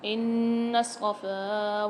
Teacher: نون پر مشدد ہے، غنہ کر کے پڑھیں گے، اور صاد کے ساتھ نون کو ملا کر بھی پڑھیں گے۔